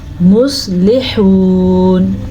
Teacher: سواد کو پر پڑھنا ہے کیونکہ سواد ہمیشہ ہی پر پڑھا جاتا ہے. لام کو لمبا نہیں کرنا، لام کے نیچے زیر ہے